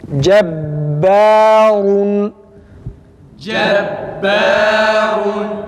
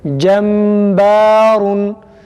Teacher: Ba'da dikkat etmemiz gereken bir nokta gunnenin okunmamasıdır. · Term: şeddeli halinde